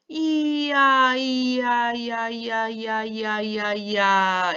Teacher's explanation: 처음은 이로 시작해서 끝이 아로 끝나니까 입술이나 혀가 움직이는 이중모음이 되겠죠.